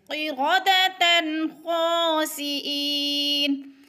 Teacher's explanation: قردۃ تن پہ غنہ نہیں ہوگا، اظہار ہوگا، اس لیے کہ دو زبر تنوین کے بعد آگے خا حروف حلقی میں سے آ گیا ہے تو اظہار ہوگا، غنہ بالکل نہیں کریں گے۔